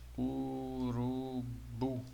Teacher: Urubu. Observe que quando chega no bu aqui fica mais forte, né? Então é uma oxítona.